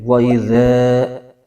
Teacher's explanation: ذا میں الف سے پہلے زبر ہے، تو یہاں پر الف مدہ ہوگا، اس کو ایک الف کھینچیں گے۔